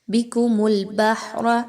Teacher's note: بِكُمُ الْبَحْرَ، ہا کے مخرج کو بہت توجہ کے ساتھ پڑھیے، بہت اچھے سے نرمی کے ساتھ ادا کیجئے۔ اور را کے اوپر زبر ہے، اس را کو پر پڑھا جائے گا۔